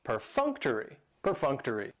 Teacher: And perfunctory has 4 syllables, and the stress is on that second syllable, that funk, perfunctory. That third syllable has the schwa, and it's going to end with that long E sound, perfunctory.